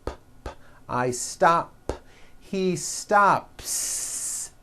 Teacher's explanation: I stop ends with an unvoiced P.